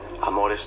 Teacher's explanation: amores tiene breve la primera y largas las otras dos